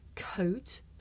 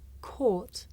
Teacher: For speakers of some languages, it may be difficult to tell the difference between the diphthong O and the long vowel or